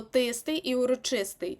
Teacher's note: в нас є два прикметника які мають наголос на Ист